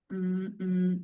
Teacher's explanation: This sound is simply made by pressing the lips together lightly while making a sound with the vocal cords. In speech, the teeth may begin to part a little in preparation for the vowel in the word mm. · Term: the M consonant, The M consonant